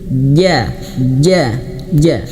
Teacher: huruf jim itu makhrajnya letak suaranya itu di tengah lidah ya. Ja ja ja di tengah lidah.